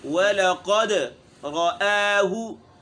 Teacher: ولقد واو باریک ہے، لام بھی باریک ہے، قاف موٹا ہے، دال میں قلقلہ ہے